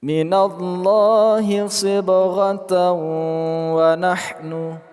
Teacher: Ta marbutoh berharakat tanwin bertemu dengan wawu, idghom bi ghunnah.